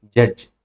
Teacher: Starting vibration వచ్చింది, last లో కూడా వైబ్రేషన్ వచ్చింది. కాబట్టి ఏదైతే ఎడ్జ్ ఉన్నాయో ఇవి ఎఫ్రికేట్స్ అని నేర్చుకున్నాం.